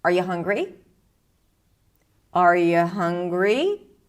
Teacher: This rising rising intonation is usually associated with yes no questions when you use that and the answer that you expect is either a yes or no.